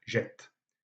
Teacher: Et par contre, lorsqu'on a la double consonne, ce n'est pas nécessaire de mettre l'accent. On sait que la voyelle tonique sera une voyelle ouverte et brève.